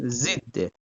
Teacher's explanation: Amma qrammatik şəkilçidirsə, yəni özündən sonra maqmə artıra bilmiriksə, artıq tələffüz zamanı sonda olan r düşəcək.